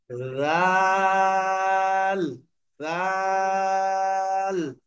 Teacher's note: এই লাল হরফটাকে পাতলার সাথে উচ্চারণ করতে হবে